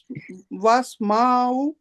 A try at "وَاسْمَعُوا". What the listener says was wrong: واسمعوا، نہیں میم کو کھینچنا نہیں، واسمعوا، آئین کو کھینچیں، او، آئین، او، درمیان میں ہلکے درمیان سے،